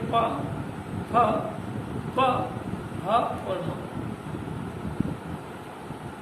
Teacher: इन पांचों ध्वनियों में, यानी पूरा प वर्ग जो है, इसमें दोनों होठ मिलेंगे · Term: ओष्ठज ध्वनि